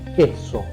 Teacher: La letra Q, en la amplia mayoría de los casos, excepto que se esté citando en el español una palabra en otro idioma, la van a ver siempre acompañada por la vocal U. Se pronuncia K y la U que está junto a la K no se pronuncia.